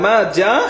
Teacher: 4 আলিফ টান দিতে হবে।